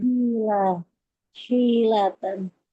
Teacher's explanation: huruf H-nya di tengah tenggorokan